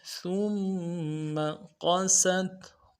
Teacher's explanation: قوف کو موٹا کریں گے، سین کی سیٹی باریک ہوگی ، سین کو تا کے ساتھ ملانا ہے، قست قلوبکم، قوف